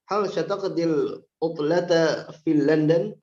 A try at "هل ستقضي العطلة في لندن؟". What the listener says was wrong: Hal sa ya, sataqdi, laisa sya, sa. Coba ulang.